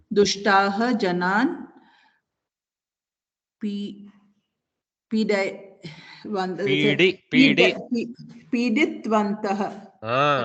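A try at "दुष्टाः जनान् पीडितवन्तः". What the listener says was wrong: Piditavantaha. No halant. No halant. Piditavantaha. Everything is nice, open mouth with the swaras. Piditavantaha.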